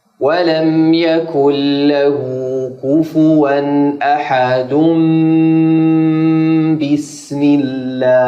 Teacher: nun mati atau tanwin ketika ketemu huruf ba maka berbalik dari nun mati n ke mim itu dikatakan iqlab